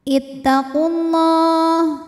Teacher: lam pada lafaz Allah dibaca secara tafkhim karena huruf sebelumnya damah maka lamnya tebal · Karena pertemuan 2 sukun, di sini sukunnya waw sukun dan lam sukun. Maka yang dilepas adalah waw sukun. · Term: takhalus bil hadfi